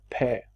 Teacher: se pronuncie como una P, un sonido con distensión aspirada